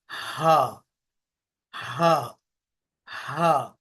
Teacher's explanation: हमजा ए हा व आएंगे हलक के आखरी हिस्से से जो सीने के पास